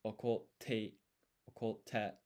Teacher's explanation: So in hiragana, that's gonna be, this is o, this is ko, and then to get this double T, basically what you do is you write a half-size tsu, and that half-size tsu is called sukuon. And it's basically like a beat of silence, and then you place extra emphasis on the T, the next consonant. So in this hiragana te, the T is the consonant, and so you put extra emphasis on it.